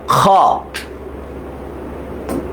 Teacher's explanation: এটা হচ্ছে খ, এটা হচ্ছে খ, খ। গলার মধ্যে একটা খুসখুস একটা ব্যাপার কাজ করে